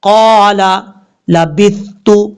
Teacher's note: سا ہے بغیر سیٹی کے ساتھ پڑھیں گے، اس کو سیٹی نہیں پڑھنی